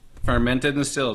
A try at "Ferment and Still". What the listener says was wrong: Ferment. And Still. Ferment and Still. Yeah, it's like everyone does it. They're like fermented still. No, it's ferment and still. And still.